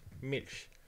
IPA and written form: mɪlç (Milch)